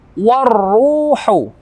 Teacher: alif lam bertemu dengan ra, hukum tajwidnya idgham. Alif lamnya tidak kita baca, langsung kita masuk kepada ra bertasydid. Warruhu, ada dhammah bertemu dengan waw mati, hukum tajwidnya mat tabi'i.